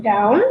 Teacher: When I'm saying down, my voice goes lower. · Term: intonation